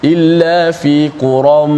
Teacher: ada tanwin kemudian berjumpa dengan mim di situ, maka berlaku idgham. Illa fi quram, jangan kita terkejut apa pula ya dekat situ, kemudian nak kena masuk dalam mim, menyebabkan ada yang baca qura, ada dia terpengaruh dengan ya, dia lupa nak masuk dalam mim.